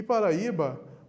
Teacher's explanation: É interessante saber disso. E Paraíba, o A e o I ficaram isolados, nós temos um hiato, nós temos duas vogais fortes. Se o I estivesse junto, teríamos um ditongo.